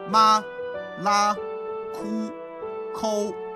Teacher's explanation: Tone number one, stay on the same level of sound